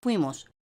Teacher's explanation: Como en la primera sílaba de la palabra fuimos hay dos vocales, U e I, dos cerradas consecutivas, decimos que esto es un diptongo homogéneo.